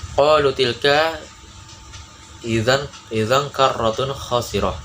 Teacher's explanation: bertemu dengan huruf kha, dibaca jelas, tidak berdengung · Cara bacanya samar dengan dengung. Lalu cara mengucapannya seperti bunyi ang. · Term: izhar, ikhfa